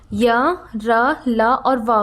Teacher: इनका जो उच्चारण होता है वो स्वर और व्यंजन दोनों के बीच का सा महसूस होता है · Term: अनस्थ व्यंजन